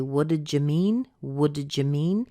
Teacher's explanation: jut in there that's the the did plus the you the the D plus the Y combining together and giving us a little just sound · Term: little j sound